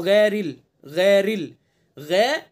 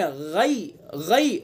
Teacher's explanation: देखिए यहाँ गलती क्या करते हैं हम, गैरिल पढ़ देते हैं इसको, गैरिल, गैरिल, गै ये गलत हो गया, मजहूल हो गया, मारूफ पढ़ेंगे गई